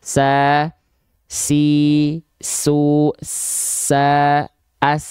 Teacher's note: tapi kadarnya mengalir nafas misalnya huruf ah huruf Sin tuh sama huruf Sin juga dia punya sifat hams ya tapi kadarnya mengalir nafas